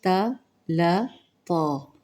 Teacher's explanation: ता मोटा पढ़ा जाएगा, मुस्तालिया हर्फ है